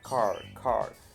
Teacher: Estos tres sonidos, aun cuando tengan cierto matiz distinto, tienen el mismo principio rótico, es decir, la lengua se retrae para pronunciar la R, ya no es en la punta múltiple como nosotros. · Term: sonidos róticos